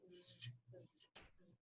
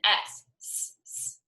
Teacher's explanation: That Z, z, z sound is buzzier, as we'd say, than our S sound. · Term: sister sounds